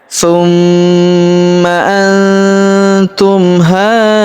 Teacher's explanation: huruf ha kita panjangkan empat atau lima harakat karena di atas huruf ha terdapat tanda garis bacaan panjang empat atau lima harakat yang ini ya.